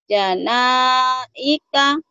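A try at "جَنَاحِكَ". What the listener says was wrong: Janahika, bukan ika.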